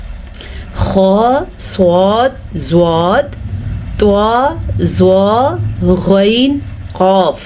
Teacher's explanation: ये हरूफ हमेशा ही पुर पढ़े जाते हैं, यानी कि मुंह भर के इन हरूफ को पढ़ते हैं। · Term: हरूफ मुसालिया